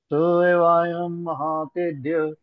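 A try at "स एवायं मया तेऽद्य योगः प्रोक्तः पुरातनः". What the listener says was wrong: मया तेद्य, महा नहीं, मया मया। स एवायं मया तेऽद्य योगः प्रोक्तः पुरातनः भक्तोऽसि मे सखा चेति रहस्यं ह्येतदुत्तमम्।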